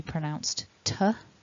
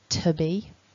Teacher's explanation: that weak form of to, which can be pronounced to, with the schwa, to be. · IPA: /ə/